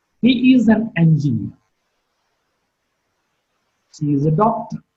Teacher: when I'm using these statements or uttering these statements, my tone is not rising, but on the other hand, my tone is falling. And if you see, the sign which is used for falling tone is also going downwards.